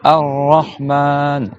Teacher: Donc, on fait deux Ra et on prolonge bien le A. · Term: shadda